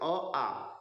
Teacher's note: तो हमने कहा जब हम अ आ कहते हैं, अ आ, ठीक है, तो अ आ का उच्चारण स्थान कंठ होता है, कंठ से निकलता है।